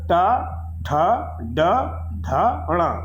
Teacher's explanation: ट, ठ, ड, ढ, ण, इनका उच्चारण स्थान है मूर्धा। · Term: ट वर्ग